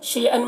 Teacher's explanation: شیئن میں یا لین ہے، اس یا لین کو جلد پڑھنا ہے